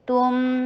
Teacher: تا کے پر ضمہ، ہونٹوں کو گول کیجیے ، میم کے پر توسط دیجیے، تم، تا، پھر یہ اخفا